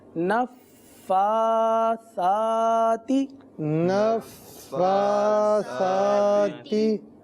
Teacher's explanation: جیسے نفثاتی، تو دونوں پر کھڑا زبر ہے، دونوں کو 1 الف تک کھینچ کر پڑھیں گے